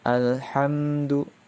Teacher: izhar syafawi, membacanya dengan jelas. Jadi hanya 1 harokat saja. Hurufnya selain huruf ba dan mim, itu merupakan huruf izhar syafawi.